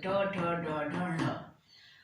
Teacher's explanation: मूर्धा को छू के निकलते हैं इसलिए इनको कहते हैं मूर्धन्य